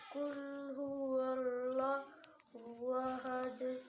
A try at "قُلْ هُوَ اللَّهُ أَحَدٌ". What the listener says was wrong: आपने सांस क्यों तोड़ दिया. قل هو الله أحد. هو الله भाई. هو وال هو قل هو الله أحد قل هو الله أحد قل هو الله أحد قل هو الواو है